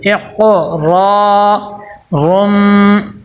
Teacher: را کو موٹا کر کے پر کر کے پڑھیں گے اور آگے الف مدہ آ گیا اور لمبا بھی کریں گے